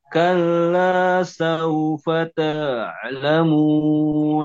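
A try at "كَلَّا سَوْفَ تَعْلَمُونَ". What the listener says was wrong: Cuman vokalnya sekarang buka dikit. Yang saufa. Oke, nah seperti itu senyum, seperti tersenyum, bacakan.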